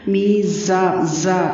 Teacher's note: میزان میں میم یا زیر می مد اصلی ہے، تھوڑا سا لمبا کرنا ہے. زا کی آواز میں سیٹی والی آواز ہوگی، تھوڑی سی شدت ہوگی.